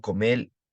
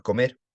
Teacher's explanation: lateralización de la vibrante simple